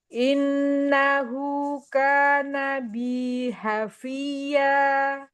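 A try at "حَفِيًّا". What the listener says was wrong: Enggak Hafia. Ya, fathahnya Hafia. Enggak ada nabernya. Hafia, Hafia.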